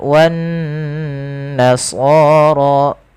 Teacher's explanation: Dan dia diwarnai dengan warna hijau, kita hukumi dengan bacaan ghunah. Kita tahan bacaannya sepanjang dua harakat. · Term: gunnah